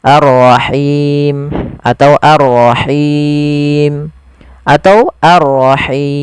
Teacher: muncul karena waqaf dan dimatikan panjangnya berapa untuk Mad Ar sukun panjangnya boleh dua empat atau 6 harakat · Panjangnya boleh 2, 4 atau 6 harokat. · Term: mad arid disukun